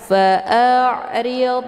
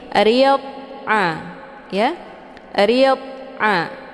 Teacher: Dia letaknya di tepi lidah, menyentuh dengan gigi gerahang, baik atas maupun bawah, kiri atau kanan. Jadi dhad ini dia bukan huruf qalqalah, jadi jangan dibaca secara dipantulkan. Fa'ridhan keluar bunyi d, itu bacaan yang salah.